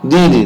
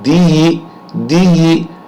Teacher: جب دال کسرہ کے ساتھ یا آ رہا ہے تو وہاں آواز بڑھے گی